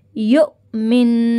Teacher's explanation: حمزہ ساکنہ کو جھٹکا دیں گے